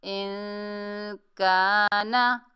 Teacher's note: हमज़ा को नून साकिन से मिलाएंगे, इक्फा करेंगे, आवाज़ को नाक में रुकेंगे।